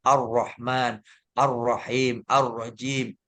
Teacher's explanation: harus menelan lam lam sukunnya tidak dibaca